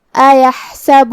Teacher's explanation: حرف الحا ہے، حلق کے درمیان والی حصے سے ہے جو کہ اس پہ جزم ہے، لہذا ہمیں حا کو ظاہر کرنا ہے۔